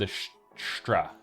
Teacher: anyway to get that r sound right or something and uh the mouth just wants to make that r sound earlier than it's actually supposed to you end up with a straw instead of a straw something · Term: s backing